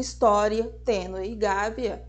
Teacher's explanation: a semivogal vem antes e a vogal vem depois, dando essa ideia de um som saindo do menos intenso para o mais intenso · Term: crescentes